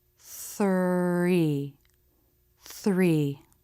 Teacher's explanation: so they can be transitioning to the next sound for example in the thr cluster the lips will round a little bit for the r as you make the th